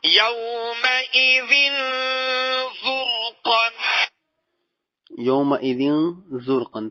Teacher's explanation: تنوین کے بعد زا ہے جو کہ حروف اخفائی میں سے ہے، لہذا یہاں پہ اخفا کیا جائے گا. یومئذ زرقا.